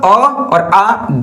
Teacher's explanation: अ और आ दोनों का उच्चारण जो है कंठ से होता है